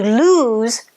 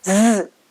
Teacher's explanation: to lose has a zed sound which you make with your tongue high in the mouth close to the back of the teeth and you vibrate the air through